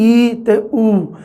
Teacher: ਦੋਨੋਂ ਬੋਲਣ ਵੇਲੇ ਕੀ ਹੈ ਕਿ ਜੀਭ ਦੀ ਸਥਿਤੀ ਹੈ ਜਿਹੜੀ ਉਹ ਜ਼ਿਆਦਾ ਉੱਚੀ ਉੱਠਦੀ ਹੈ, ਇਸ ਕਰਕੇ ਇਹਨਾਂ ਨੂੰ ਉੱਚੇ ਸਵਰ।